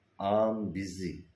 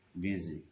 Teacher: So here we have given the stress on the word busy.